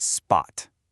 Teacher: It's like the P sound in the English word spot. See, it's soft. No real air comes out. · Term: unaspirated